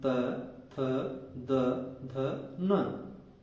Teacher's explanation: इसके बाद है दंत्य वर्ण। पूरा तय वर्ण दंत की सहायता से बोला जाता है। जो हमारे दांत होते हैं, ये देखिए, इनकी सहायता से ये तय वर्ग बोला जाता है।